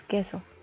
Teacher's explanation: la primera es la que resulta con una entonación más fuerte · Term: sílaba tónica